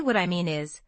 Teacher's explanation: When I say what I mean is, the stress falls on mean and is